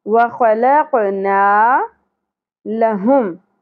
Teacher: وخلق نہیں پڑھنا، ہلانا ہے قاف کو